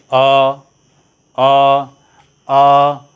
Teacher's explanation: अ बोलते समय कंठ पर दबाव पड़ रहा है, कंठ हमारा प्रभावित हो रहा है